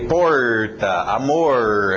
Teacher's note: Agora, o R no inglês, não é esse R que eu estou falando no português, de umas certas regiões do Brasil. O que nós queremos é aquele R que cai em outras regiões, do interior.